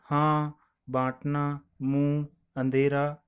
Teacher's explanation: अनुनासिक में इसके उच्चारण में हवा मुंह और नाक से बाहर निकलती है